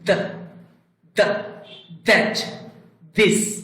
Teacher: আমরা দেখতে পাচ্ছি দুই দাঁতের মাঝখানে জিহ্বার আগাটি আসবে